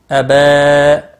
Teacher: با کے اوپر کھڑی زبر ہے 1 الف کے برابر کھینچ کر پڑھیں گے